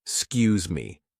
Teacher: We say excuse me dropping the e sound.